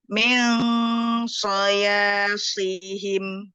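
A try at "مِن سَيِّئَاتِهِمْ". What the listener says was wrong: Kurang sedikit di si-nya panjang.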